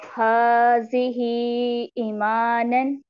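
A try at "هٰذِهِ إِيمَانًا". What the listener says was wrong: पहली बात तो ये बेटा कि आपने जाल जो है ना, हाजी, इसको भी लंबा थोड़ा सा कर दिया, इसको लंबा नहीं करना, ठीक है। ई भी तो याय मद्दा है ना, ई को ई पढ़ना है।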